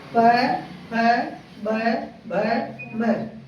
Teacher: इसको बोलते समय हमारा दोनों ओठ क्या हो रहा है? टच कर रहा है। बिना ओठ तक किए आप नहीं बोल पाओगे, है नहीं बोल पाओगे, इसीलिए इसे कहा जाता है ओष्ठ व्यंजन।